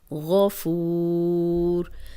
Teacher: الغفور، غفور، اب غین موٹا ہے اور فو واو مدہ ہے، واو مدہ کے بعد ایک حرف اور آگے آ گیا جس پہ جزم لگا کے ہم وقف کر رہے ہیں، تو اس کو تینوں طریقوں سے ہم پڑھ سکتے ہیں، 2 حرکات 4 اور 6 حرکات